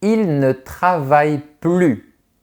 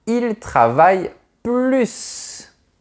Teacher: C'est une négation, donc je ne prononce pas le S. En revanche, on dira « il travaille plus ».